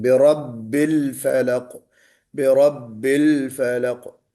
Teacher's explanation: में कुछ लोग लाम के ऊपर कलकला कर लेते हैं, बेरब्बिल फलक हो जाता है। बेरब्बिल, ये जो है ना लाम, कलकला नहीं होना चाहिए